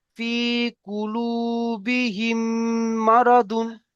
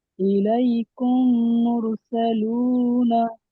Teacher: মিম সাকিনের পরে মিম এসেছে, তাই মিমকে এক আলিফ পরিমাণ গণ্য করে পড়তে হবে। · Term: ঈদগামে সাফাবি